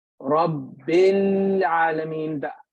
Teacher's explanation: alif dropped. You connected the ba directly with the lam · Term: Hamzatul Wasl